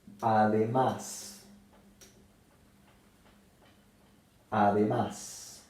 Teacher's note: la palabra además se acentúa en la última sílaba y termina en S. Entonces lleva tilde. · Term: palabras agudas